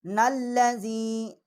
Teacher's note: نون جو ہے اس کو ہم تشدید کریں گے لام کے ساتھ